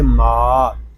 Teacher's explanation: میم کو ہم ایک الف تک کھینچ کر پڑھیں گے کیونکہ یہاں پہ الف مدہ ہو رہا ہے۔ اس میم کو جب ہم ادا کریں گے تو کوشش کیجئے کہ اس کی آواز ناک میں نہ جائے، اس کو ماں اس طرح نہیں پڑھیں گے، اس کو پڑھیں گے ماں۔